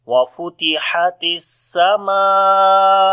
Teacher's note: How we read from the middle of the throat. On the sin we make hams and safir quality. Meme we long due to alif madda, and also there is big mad sign which is called madde muttasil, because after the madda letter if hamza comes in the same word we make madde muttasil which we long 4 to 5 seconds.